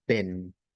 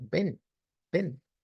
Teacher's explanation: la E, en este caso, recordemos que es la epsilon, es decir, la E abierta, epsilon es el sonido de acá, que vamos a decir como ven.